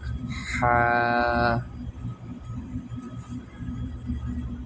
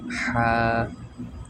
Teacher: হলকের মধ্যখান থেকে এটা উচ্চারণ হয়, হলকের মধ্যখান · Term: 2 নাম্বার মাখরাজ